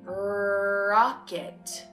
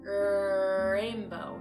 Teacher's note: your tongue is anchored, it's strong, it's up, it's pulled back, and that your lips are not rounded